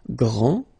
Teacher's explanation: This final D is not pronounced. Okay, so grand, and then the feminine form, grande.